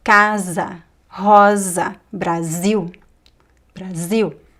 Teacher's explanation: if you find the s between two vowels in the middle of a word, it is pronounced as a z sound. Z like as in zebra.